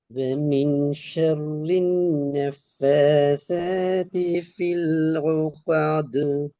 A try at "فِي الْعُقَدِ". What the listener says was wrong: இல்ல ஓ கா. நீங்க காஃபுக்கு ஐன் வருது. காஃப்ட உச்சரிப்புல ஐன் வரக்கூடாது. ஓ காது.